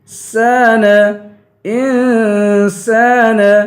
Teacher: سین کو ایک الف کی مقدار کھینچ کے پڑھیں گے